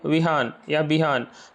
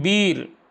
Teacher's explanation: वीर बोलने में आप बोल के भी देखेंगे तो वीर पे ज्यादा थोड़ा सा जोर लगाना पड़ता है। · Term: दीर्घ ई